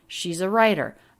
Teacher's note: writer she's a writer it's the stressed syllable of writer so we have smoothly going up she's a righter then the peak on rye and the pitch falls down · peak on rye and the pitch falls down she's a writer ah really smooth no jumps or gaps in the pitch there she's a writer and notice the t here is a flap